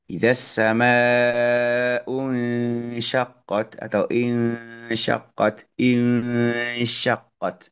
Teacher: itu di antara tempat pengucapan nun dan tempat pengucapan huruf sin. Jadi masih di antara itu. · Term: ikhfa hakiki